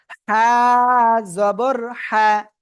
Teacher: গলায় একটু চেপে আপনাকে কি আওয়াজ করে পড়তে হবে, হালকা মুখ দিয়ে বাতাস বের হবে। হ্যাঁ জবর হ্যাঁ, জোরে।